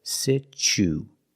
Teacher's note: So the T makes a ch sound, like chicken.